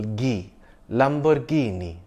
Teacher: Note that the stress is on the second last syllable, Ghee, Lamborghini.